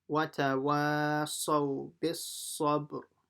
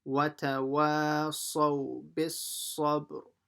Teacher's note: a r vibrating sound at the end